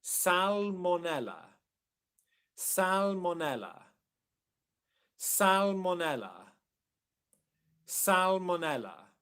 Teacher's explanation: So dark L, because it comes after the A vowel. Dark L always comes after a vowel.